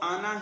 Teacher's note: نون کے بعد الف لکھا ہوا ہے لیکن اس کو لمبا نہیں کرنا پڑھنے میں